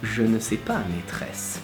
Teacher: those sounds that are the je or the r tend to lower the voice and tend to make it sound like a whisper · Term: alvéolaire fricative and uvulaire trill